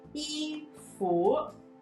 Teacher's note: First tone 衣, that upwards 服.